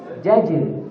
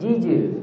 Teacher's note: Bukan jim pertama yang dikencengin, jim yang kedua yang diperjelas. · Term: jim sukun